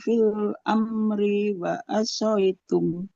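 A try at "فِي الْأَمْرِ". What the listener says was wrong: Fil amri. Ada yang dibaca panjang atau tidak, Ibu? Enggak, huruf ro-nya nggak boleh panjang. Tidak fil amri, karena kasroh tidak bertemu dengannya.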